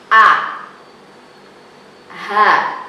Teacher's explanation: Yang pertama adalah hamzah dan ha. Itu harus keluar dari tenggorokan bagian bawah.